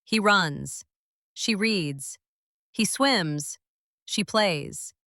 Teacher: Feel your throat. It vibrates slightly for that Z sound.